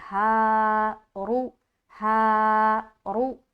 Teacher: रु और हा को एक अलिफ के बराबर खींचेंगे